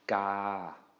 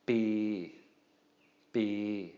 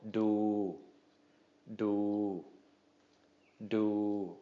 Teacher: All right, and then the final one here, final example, we have the letter Daw Dek, which is a middle class consonant, and we have the U, long, the long U sound. So middle class plus a long vowel equals a long mid-tone.